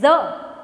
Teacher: ઝ એમાં પણ જીભ છે એ તાળવાને અડે છે. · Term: તાલવ્ય